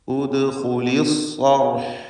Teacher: സ്വാദിന് പൂർണ്ണമായ തഫ്ഖീം കൊടുക്കുക. ഇസ്തിഅലാഇൻ്റെ ഹർഫാണ്, മഫ്തൂഹാണ്. റാഇനും തഫ്ഖീമാണ്, സാക്കിനത്തായ റാ.